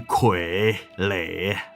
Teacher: 两个三声的字啊，你连在一起的时候，前面那个字会变成二声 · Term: 变调